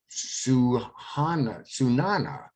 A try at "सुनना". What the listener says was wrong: Sunna. Sunna. Sunana is a different verb. It has a different meaning. Sunna means to listen. So the correct pronunciation of this sentence is मुझे सुनना है. And when we say it in our normal speed, we actually just say मुझे सुनना है.